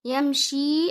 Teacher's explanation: Now you'll join the ya with meme sakina. Make sure not to bounce it.